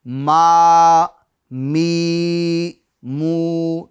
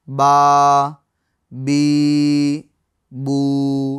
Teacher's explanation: تو یہ با، دیکھ یہ با ہے نا، یہ ہونٹوں کے خشک حصے سے ادا ہوتا ہے، ہونٹوں کے خشک حصے سے ادا ہوتا ہے، اور میم یہ ہونٹوں کے تر حصے سے ادا ہوتی ہے۔ میم ہونٹوں کے تر مطلب گیلے حصے سے ادا ہوتی ہے، اور با خشک یعنی سوکھے حصے سے ادا ہوتی ہے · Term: حروف شفویہ